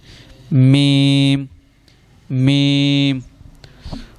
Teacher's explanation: میم، دونوں ہونٹوں کے خشک حصے سے